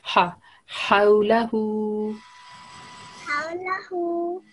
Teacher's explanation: So this ha is thick, ha, thick sound coming from your throat.